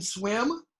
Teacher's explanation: tense the it in swim it's called the front vowel okay it's a front tense vowel so your mouth is kind of tense